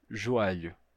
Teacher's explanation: Isso acontece, por exemplo, numa palavra como joelho. É muito comum que alguém em Lisboa diga joelho, com som de a, joelho.